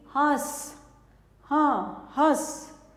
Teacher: नाक से और मुंह से इसकी ध्वनि निकलती है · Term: चंद्र बिंदु